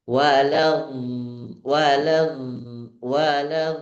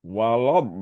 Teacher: Antara la dengan D jangan sampai putus. Wad itu putus namanya.